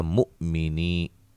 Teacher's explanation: حمزہ کو جھٹکے سے، لیکن قلقلہ نہیں کرنا ، ایسے نہیں کرنا، نہیں، مؤمنی، نی یا مدہ ہے، نلذی